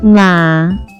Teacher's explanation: It has two character pronounced with fourth and third tone.